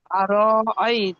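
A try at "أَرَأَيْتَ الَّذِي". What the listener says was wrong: তাল্লাজি, এখানে তার ল পড়ছেন কেন? তার ল হবে না, আল্লাহ শব্দ নেই এখানে। আইলে তাহলে ল হতো, এখানে আল্লাহ শব্দ নেই, সেই জন্য তাল্লাজি লা পড়তে হবে।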